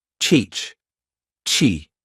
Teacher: The CH sound combines a T and SH. I build up pressure with the T and then quickly switch to the SH.